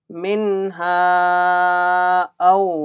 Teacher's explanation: Hamza came after Alif Madda, there will be Madde Munfasil. Stretch two Alif or three Alif.